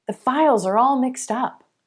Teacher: we shift our stress to the word up and we get mixed up which means to be confused or disordered